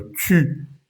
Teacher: para el sonido U de la palabra tu o lune, los labios deben estar muy redonditos, más que en español. Por ejemplo, tu y no tú, sino tu.